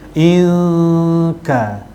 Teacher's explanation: Okey, inka ikfa hakiki, nun mati, nun sakinah yang bertemu dengan huruf kaf, ikfa hakiki. Dibacaannya dengung dengan kadar 2 harakat dengan cara memasukkan huruf kaf semasa kita dengung.